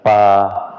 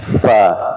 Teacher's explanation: Bibir bibir bawah ketemu dengan gigi seri atas